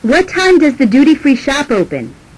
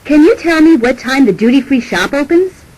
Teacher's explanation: wh questions usually have falling intonation indirect questions usually have Rising intonation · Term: question intonation